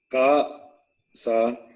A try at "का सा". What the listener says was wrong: Kasa, yes. Kasa, not Gasa.